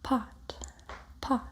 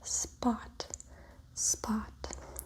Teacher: If you hold your hand in front of your mouth and say spot, spot, and then you say pot, pot, you can feel a little puff of air when you say pot and not when you say spot. This means that these sounds are produced differently, even though we might consider them to be the same sound.